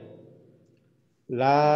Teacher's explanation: 8 নম্বর মাখরাজ জিহ্বার আগা সামনের দাঁতের মাড়ির সঙ্গে লাগাইয়া